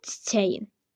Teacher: Çiçəyin deyəndə burda k düşür. K Y əvəzlənməsi baş verir.